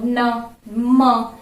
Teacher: नाक से इसकी वायु बाहर निकलती है। तो इसको क्या कहते हैं, नासिका से जो होते हैं इनको कहते हैं नासिक के वर्ण, नासिक के।